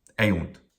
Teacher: The second syllable, oh, short vowel, but 2 consonants at the end, definitely a long syllable.